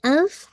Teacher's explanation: اف ہمس ہو رہا ہے، year باہر نکلے گی